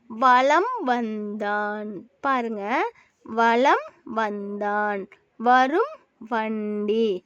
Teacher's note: அந்த ம் தன்னுடைய அரை மாத்திரையிலிருந்து குறைந்து கால் மாத்திரையாக வரும் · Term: மகரக் குறுக்கம்